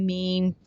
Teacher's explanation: دونوں ہونٹوں کے خشک حصے آپس میں ملے تو میم ادا ہوتا ہے